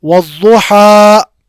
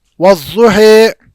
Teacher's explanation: امام حفص عاصم کی روایت جو ہم پڑھتے ہیں ہم فتح کے ساتھ پڑھتے ہیں. ہا آپ نے الف کو پورا ادا کیا.